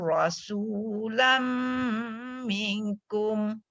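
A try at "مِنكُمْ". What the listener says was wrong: dekat minkum tu dia kena dengung. Nun bertemu kaf.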